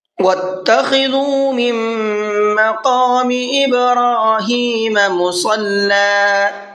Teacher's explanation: مِن مَّقَامِ یہاں پر نون ساکن ہے اور نون ساکن کے بعد میں میم آ رہا ہے۔ نون ساکن کے بعد میں میم آتا ہے تو وہاں پر بھی غنہ کر کے پڑھتے ہیں۔ یہ ادغام یرملون کا قاعدہ کہلاتا ہے۔